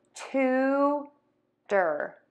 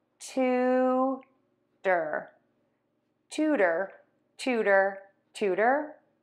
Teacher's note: this syllable louder longer higher in Pitch then we're going to unstress syllable number two make it shorter faster and lower in pitch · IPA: /ˈtutər/